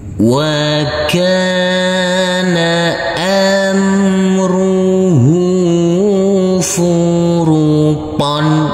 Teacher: Huruf kaf kita baca panjang dengan panjang 2 harokat. Karena huruf kaf ini huruf kaf yang berfathah A bertemu dengan huruf alif yang tidak berharokat.